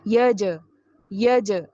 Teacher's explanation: جیم پر قلقلہ کرنا ہے. یج، یج، جیم کی آواز کو 100% ہلائیے